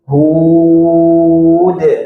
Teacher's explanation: dari awal sampai akhir ketika mad memanjangkan bunyi hak tersebut, hud bunyinya sama